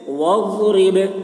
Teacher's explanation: هو خیر ثوابا وخیر عقبا، واضرب، ضاد کی آواز موٹی ہو رہی ہے، اب با میں قلقلہ، یعنی با کی آواز ڈبل نکلے گی